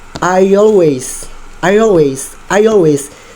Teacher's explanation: Sedikit ada kata penambahan Y di situ. Nah, itu yang dinamakan dengan intrusion.